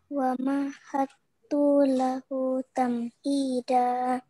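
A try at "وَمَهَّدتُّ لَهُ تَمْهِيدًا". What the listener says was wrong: Pada kata tu-nya itu juga pendek, nak. Tu-nya itu pendek, jangan dilamakan. Wa mahattu lahu tamhida. Hu-nya yang panjang. Wa mahattu lahu tamhida.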